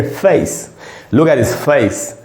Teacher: तो इसका उच्चारण होता है दोस्तों ए और ई, ए। इसीलिए अगर चेहरा बोलना हो FAC तो इसको पढ़ेंगे फेस, लुक एट हिज फेस, ऐसे पढ़ना है।